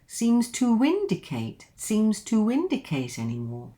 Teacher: we've got a linking here, and it's a W.